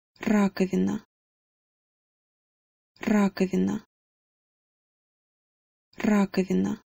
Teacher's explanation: just make sure that you get the trilled R, ra, at the beginning instead of ra. · The second syllable is pretty straightforward, but when you get to the third syllable, you do have a soft v as opposed to a v.